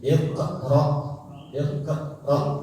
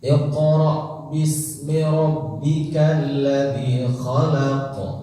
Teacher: Nanti qalqalahnya jangan dikasih jeda ya. Kita tidak membaca begini iqra iqra.